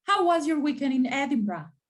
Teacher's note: you notice i emphasize how how was your weekend in edinburgh how is emphasized weekend is emphasized and edinburgh is emphasized